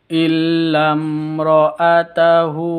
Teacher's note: mim sukun bertemu dengan ro, izhar, jelas bacanya, izhar safawi